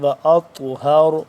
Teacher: واطہر، واطہر، طا موٹا را بھی موٹا، اور طا کے اوپر طا کیونکہ ساکن ہو رہا ہے یہاں پہ تو اس پہ ہم قلقلہ کریں گے